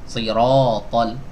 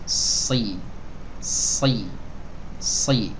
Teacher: Jadi suara desisnya tajam dan suaranya tebal ya. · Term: sofir